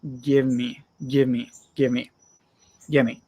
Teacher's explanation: Give me usually becomes gimme